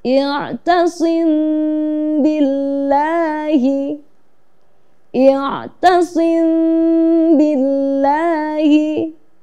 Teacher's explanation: Cara membacanya seperti kita membaca ikhfa, yaitu dengan sedikit samar, ya, dengan mengatupkan bibir tetapi tidak terlalu mengatup. Jadi ada sedikit rongga atau agak sedikit renggang begitu bibirnya untuk membaca ikhfa syafawi.